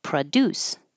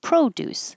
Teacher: a good contrast between the verb with stress on the second syllable, produce, and the noun with the stress on the first syllable, produce. So when the PRO is not stressed, it changes to produce, and in this case, produces.